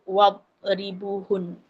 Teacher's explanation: wad kita kena telan jangan lantunkan